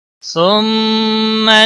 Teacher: ثم میم مشدد پر گنہ ہوگا